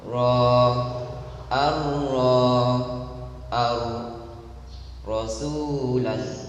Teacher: dia harus digetarkan atau diulangi getaran hanya sebatas 2 getaran, dia juga harus ditempatkan pada posisi tertentu, membaca secara tebal dan menipis. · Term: huruf ra